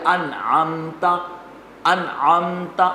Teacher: میم میں آپ نے غنہ نہیں کیا، کیوں؟ میم کے بعد تا ہے، کیونکہ نہ میم ہے نہ با ہے، اور آپ پڑھ رہے ہیں کہ میم کے بعد اگر نہ میم ہو نہ با ہو، اگر کوئی اور حرف ہو تو وہاں پر اظہار ہوگا، یعنی غنہ نہیں ہوگا، جس کا نام ہے اظہار شفوی۔